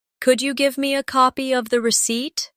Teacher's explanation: Could you becomes could ya in casual speech.